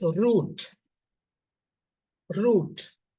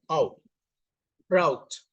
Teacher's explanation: First example, U, lengthy U, and second transcription, we can see diphthong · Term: free variation